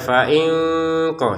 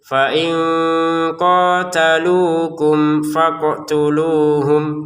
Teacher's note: fain di sini bertemu qof. Kita baca dengan samar ya. Fainqo seperti itu.